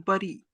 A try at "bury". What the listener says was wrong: Yeah, we say bury because you have you, but it is berry. This U is not pronounced like a, this is pronounced like E. Berry. Berry.